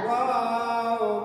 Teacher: ওয়াও দুই ঠোঁট গোল করিয়া বা দুই ঠোঁটের ভেজা জায়গা হইতে